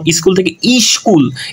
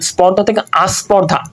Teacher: এই যে স্বরধ্বনি যে নতুন করে আসতেছে শব্দের আদিতে, তাই এটাকে বলা হয় আদি স্বরগম